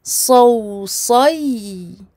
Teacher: Donc on remonte bien le fond de la langue pour le sad. On l'emphatise et on amincit par contre le waw et le ya.